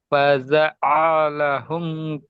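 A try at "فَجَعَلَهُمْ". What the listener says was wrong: জিমটা, না, জিমটা, জিমটা চাপা হয়নি, জিমটা চেপে হবে, জিমের মাঝখান আর উপরের তালু। ফাজআলাহুম, জিমের মাখরাজ, জিমের মাঝখান, উপরের তালু চেপে। ফাজআলাহুম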